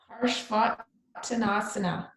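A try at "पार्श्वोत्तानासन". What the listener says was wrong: Right, except it's parjvo. Tanasana. Remember the rule, when an A and a U come together. So what this is parjva, uttana, asana. So parjva, uttana becomes parjvottanasana, right? The A and the U make O.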